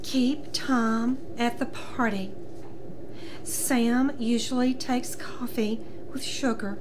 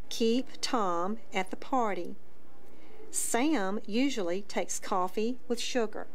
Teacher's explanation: sounds like the person is straining to talk or the voice drops out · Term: spasmodic dysphonia